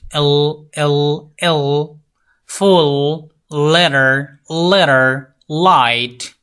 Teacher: এলভিউলার sound the টাং touches the এলভিউলার রিচ